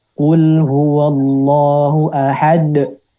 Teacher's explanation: menambah huruf hamzah setelah pantulan sehingga suara terdengar menghentak.